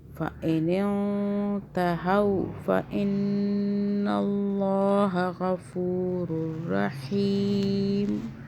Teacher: اللہ موٹا ہو گیا، اللہ سے پہلے زبر آ رہا ہے